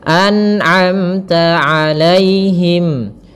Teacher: Kemudian pada lafal amta ada mim mati bertemu ta, izhar syafawi, jelas suara mimnya.